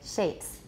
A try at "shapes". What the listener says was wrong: Yeah, don't round shapes too much, watch. A lot of you are saying shapes, but it's shapes.